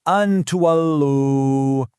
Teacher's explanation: So, instead of a hard, clear an, your tongue gets ready for the taa, but it doesn't quite touch the roof of your mouth. The sound just hangs there for a second with a light nasal hum.